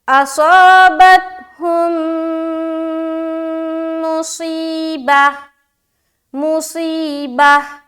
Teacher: میم کو میم سے ملا کر ہم ادغام کریں گے، ٹھیک ہے، غنے کے ساتھ پڑھیں گے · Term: ادغام شفوی